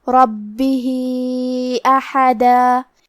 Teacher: کلمت ربہ کے آخری میں ہا کے نیچے کھڑی زیر ہے اور اس پہ مد کا علامہ ہے، یہاں مد صلہ کبرا ہے تو ہم اپنی آواز 2 سے 4 مد کے برابر لمبی کریں گے